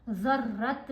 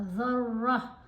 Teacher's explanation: گول تا کے اوپر وقف آ جائے تو تمربوطہ تا خاموش ہو جاتی ہے، ہا کی آواز دیتی ہے، تا کی آواز نہیں آئے گی